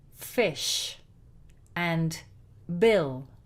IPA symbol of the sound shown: I